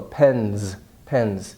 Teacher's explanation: so the s becomes voiced